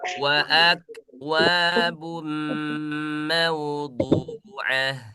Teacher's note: Huruf kaf tidak boleh dipantulin karena huruf kaf tidak punya sifat qalqalah ya.